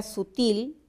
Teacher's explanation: es aguda porque la sílaba tónica es la última miramos su última letra y es una l verdad Entonces por · La palabra sutil es aguda porque la sílaba tónica es la última.